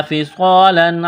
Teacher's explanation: الف سے پہلے زبر ہے، ایک الف کے برابر کھینچنا ہے، صاد کو موٹا کرنا ہے، صاد میں سٹی کی آواز پیدا کریں گے